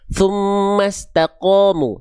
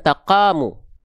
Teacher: huruf qof ketika berharakat fathah kan dibaca qo tapi qo terdengar seperti vokal o